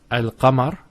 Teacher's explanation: however with al-qamar there's no issues with that and that's because the articulation point of the Lamb and the calf are far apart so the L is where the teeth and the tongue come